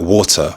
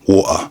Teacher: That's the skipping of a t in the middle of a word. So a word like water would become water, or a word like later will become later. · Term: glottal stop